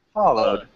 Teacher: we don't have to stress in the second uh part yeah so the first part is stressed